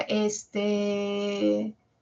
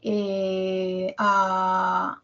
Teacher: lleno mi silencio con el tono horizontal de una vocal alargada